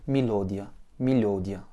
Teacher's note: L'accent est sur le O, donc le premier Y se réduit à I et le Ya fait partie de ces voyelles qui ne se réduisent pas au accent.